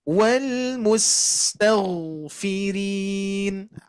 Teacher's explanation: Huruf sin, huruf ghain itu mengalir.